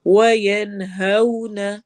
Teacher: واو لین آ رہی ہے، ہونٹ گول ہوں گے · منہ میں نون کی آواز کو چھپانا ہے، اور کا میں رو کو ہم نے موٹا پڑھنا ہے، ہیوی پڑھیں گے ہم، کیونکہ ہم وہاں پہ سٹاپ کر رہے ہیں، را ساکن ہو رہا ہے، اور اس سے پہلے پھر جو فتحہ ہے اس کے مطابق ہم نے را کی رولنگ رکھنی ہے کہ را موٹا ہوگا یا باریک.